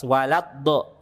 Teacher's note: Dal itu ujung lidah bertemu pangkal gigi seri atas.